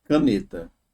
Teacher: caneta a mais forte tá na penúltima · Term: paroxítona